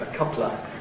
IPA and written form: ə ˈkʌplə (a couple of)